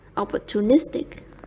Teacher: opportunistic is stressed on the fourth syllable.